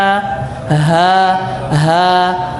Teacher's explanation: Dia berada di tenggorokan paling bawah. Makanya ha kita baca bergetar dada kita.